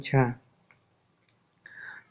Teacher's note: तालव्य महाप्राण घोष व्यंजन वर्ण का उदाहरण है झ